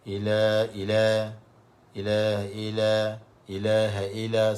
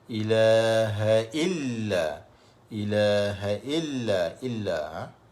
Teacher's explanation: tekan pada lam tu, illa, kerana lam itu ada syaddah. Ramai kadang-kadang tak tekan, baca longgak kata.